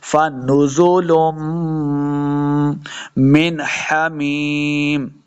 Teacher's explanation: तो यहाँ पे मीम मुशद्दद है, लाम को मीम के साथ मिलाएंगे और गुन्ना करेंगे।